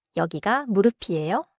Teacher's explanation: Your voice rises for the question